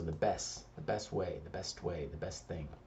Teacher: And the best, we commonly don't say that T, so the best way, the best thing.